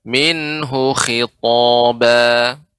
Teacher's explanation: hu di sini tidak panjang sehingga dibaca minhu khitaba